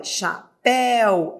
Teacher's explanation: Olha, chapéu, eu vou da vogal para a semivogal. Então, eu vou da forte para a fraca, ditongo decrescente.